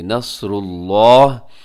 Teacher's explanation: وقف کریں گے تو آخر میں ہا کو ساکن کر دیں گے